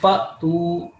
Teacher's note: इसमें फ को झटका देना है और टू को लंबा पढ़ना है. हाँ जी, फ टू, टू अलग है, देखे ना, वाओ की वजह से टू कहना है और अलिफ के ऊपर सुकून की वजह से आपने इसको झटका देना है.